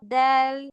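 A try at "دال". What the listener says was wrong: টান হবে আর একটু দাল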